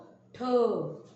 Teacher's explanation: ट च्या उच्चारामध्ये जेव्हा आपण ह जोडतो त्यावेळेस त्याचा उच्चार होतो ठ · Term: महाप्राण व्यंजन